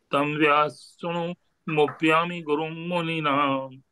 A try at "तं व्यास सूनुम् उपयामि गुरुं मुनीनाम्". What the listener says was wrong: very nice